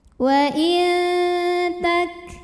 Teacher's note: tak juga punya sifat hams dari segi angin yaitu keluar angin · Sebab nun sukunnya menghadapi huruf ta, maka cara bacanya bunyi nunnya disamarkan ke huruf ta dengan disertai dengungan. Artinya saat mengucapkan huruf nun kita sudah siap-siap ke makhraj huruf ta. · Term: ikhfa hakiki